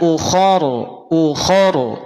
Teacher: ro dibaca tebal karena sebelumnya ada fathah